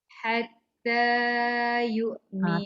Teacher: Hatta jangan panjang sangat. Hatta yu'minu. 2 harakat saja.